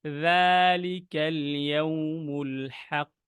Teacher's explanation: আর একটা জিনিস দেখাই, জালের মাখরাজ বা জালের বিষয়টা, জাল হচ্ছে অনেক নরম একটা শব্দ। সেজন্য জালে যখন আমরা উচ্চারণ করব, জাল একদম জিহ্বাটা বের হবে কিন্তু অনেক সফটলি উচ্চারণ করতে হবে।